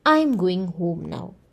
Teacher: the statement starts off in a high tone and it goes down the tone the pitch goes down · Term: falling intonation